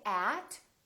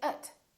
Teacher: at for with by these words are not very important so the vowels inside those words can sound really short and they sound like uh